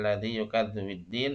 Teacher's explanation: Kalau yang asyamsiyah lamnya tasdid. Huruf setelah lamnya bertasdid. Lamnya tidak dibaca.